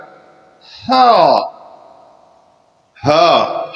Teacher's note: اس کو حلق سے پڑھیں گے تھوڑا سا زور لگا کر ہا ہا۔ ہا پڑھنا جو ہے اس کو درست نہیں ہے، اس کو جو ہے حلق سے ہم صرف تھوڑا سا زور لگائیں گے اور اس کو ادا کریں گے ہا۔